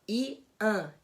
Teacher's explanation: Esse an, por ter esse AN, a gente não vai colocar como dois sons diferentes, porque a gente não tem o som do N, a gente tem só uma nasalização